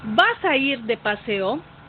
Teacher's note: hay línea tonal ascendente tiene mayor intensidad de tono